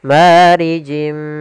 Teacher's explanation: di sini ada kasratain bertemu dengan huruf mim yaitu idgam bhunna kita masukkan lagi tanwinnya ke huruf mim dan ditahan gunahnya · Kita masukkan lagi tanwinnya ke huruf mim dan ditahan gunnahnya. Marijim. Kemudian min nar. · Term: idgham bi gunnah